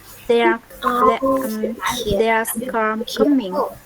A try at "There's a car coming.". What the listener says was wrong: There's a car coming. There's a car coming. Just make sure you try and pronounce that A. So you could say there's a car coming or there's a car coming.